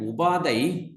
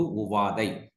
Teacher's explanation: Pa, bilabial voiceless stop sounds, Pa changed into labiodental Va. It is under the dissimulated categories.